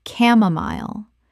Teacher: The c h makes a k sound and the final syllable rhymes with mile.